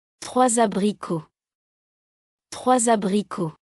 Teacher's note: Before a vowel, use liaison, S becomes Z.